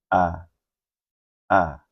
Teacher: Alif atau hamzah, tempat keluarnya adalah dari pangkal tenggorokan.